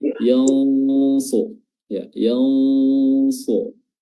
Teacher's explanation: nunnya disamarkan dengan meletakkan posisi lidah kita di makhraj huruf shad. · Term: ikhfa